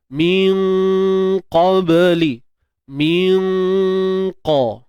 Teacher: Jadi dengung tebal. Sebab huruf qaf tebal, dengung pun tebal. Min qa. Kita bersedialah nak sebut huruf qaf tu, nanti senang nak sebut bila kita dah ready kan pangkal lidah kita tu.